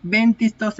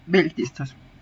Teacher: en vez de la lambda, vamos a tener una asimilación en nasal delante de una dental